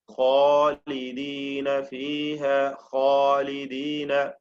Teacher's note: ഖാ ഉച്ചരിക്കുമ്പോൾ നാവിന്റെ പിൻവശം ഉയർന്നു വരുന്നു.